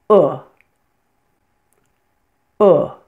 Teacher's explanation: Your tongue tip should be down, but your whole tongue is pulled back from your front teeth, as so. And this is a lax sound, which means all the muscles of your face, your jaw, your tongue should be relaxed as you pronounce this sound.